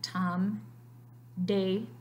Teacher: you can feel your tongue touch that alveolar ridge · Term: alveolar sounds